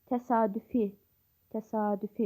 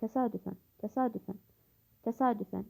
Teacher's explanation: Təsadüf təsadüfi sözlərində uzanma var. Təsadüfən sözündə uzanma yoxdur.